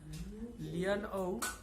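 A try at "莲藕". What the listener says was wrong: লিয়ান না লিয়েন।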